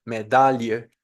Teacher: no pronunciamos la i dentro de la sílaba donde está si no la mandamos a la segunda sílaba